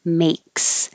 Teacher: The vowel is A, like hey. So you have to rise. Your tongue goes A.